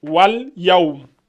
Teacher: On dit wal. Wa al, ça donne wal. On saute le a là.